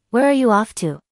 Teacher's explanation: Notice the falling intonation since this is an information question, not a yes, no question.